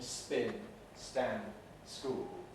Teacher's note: The effect of the S is to remove the aspiration